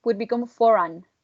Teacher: the R joins the following word with it, right? So for an would become foran. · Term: linking R